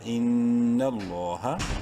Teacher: ان نون مشدد ہے غنہ کریں گے، نون لام زبر نل، لفظ اللہ سے پہلے نون پہ زبر ہے، لام کو بولڈ کرتے ہوئے ایک الف کے برابر لمبا کریں گے